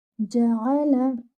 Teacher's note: your jim should be without air and should be given one count. Ain should be from the middle part of the throat and should be given one count.